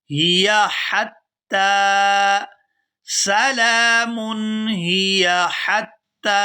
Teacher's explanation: یہاں پر جو پہلی ہا ہے یہ پورا ادا ہوگی، اور جو دوسری ہا ہے یہ باریک ادا ہوگی۔